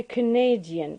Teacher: stress is shifting from the first syllable to the second